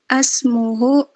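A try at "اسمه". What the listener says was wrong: Ismuhu, jangan asmuhu, ismun.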